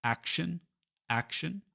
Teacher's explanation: Now, it's easy to see in Spanish that the stress syllable is the one with the O because we have this nice little accent mark here, acción. But in English, we stress the first syllable. It's action, action. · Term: stressed syllable